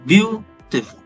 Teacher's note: And then next we have dactylic, which has the pattern stressed, then unstressed, and then unstressed again